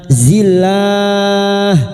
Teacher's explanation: Lam jalalah yang didahului kasrah dibaca tarkik atau tipis. Dan empat harakat kita panjangkan.